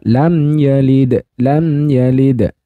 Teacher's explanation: Di mana lam yalid Nah di sini ada hukum mim sukun mim sukun ketika bertemu selain mim dan ba maka dibaca izhar syafawi yang namanya izhar itu dibaca jelas mim sukunnya